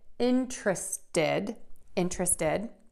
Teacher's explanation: you can make this last T a D and just add it did, interested, interested. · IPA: /ˈɪntrəstəd/